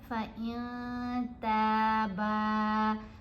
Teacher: اسی طرح یہاں پر بھی ہم نے اخفا کیا کیونکہ تا بھی حروف اخفا میں سے ہے، تو ہم نے پڑھا فَإِن تَابَا، تا کو بھی لمبا کیا، با کو بھی لمبا کیا، دونوں کے ساتھ زبر کے ساتھ الف حرف مدہ ہے۔